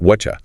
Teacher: That T plus Y combination creates a chi sound. So you get whatcha. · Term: assimilation